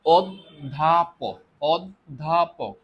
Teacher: এই দেখো এই যে ধ জ ফলা এটা মানে হচ্ছে আমরা প্রথমে দ উচ্চারণ করি তারপরে ধ উচ্চারণ করি তাহলে আমরা দ টা দুইবার উচ্চারণ করি